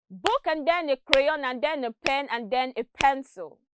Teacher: notice that the time between each stressed word is the same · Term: stress timing